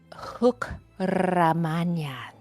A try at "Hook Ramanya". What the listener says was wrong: More phlegm on the hook. I mean, better than the first try.